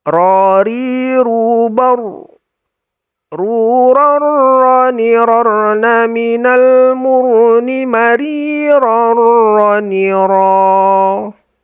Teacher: Itu ujung lidah kita tempelkan ke gusi atas. Cuma lebih naik sedikit daripada nun. Jadi kalau nun itu persis di gusi atas itu, ro itu lebih tinggi sedikit, lebih naik sedikit.